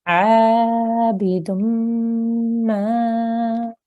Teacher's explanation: Here we have a blank alif, which is an alif mad. So we do need to elongate this for 2 seconds.